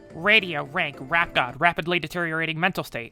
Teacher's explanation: it's described in general american is like an alveolar proximate but it's almost always labialized like ru and it's usually retroflex so it's a little further back in the mouth